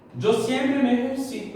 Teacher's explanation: Porque sua sílaba tônica é lá, penúltima. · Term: grave